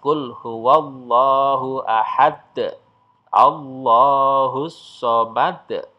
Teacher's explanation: maka cara membacanya adalah dipantulkan dengan pantulan yang besar atau disebut dengan Qalqalah Kubro Kubro itu artinya besar di pantulannya betul-betul kelihatan Hai nah contohnya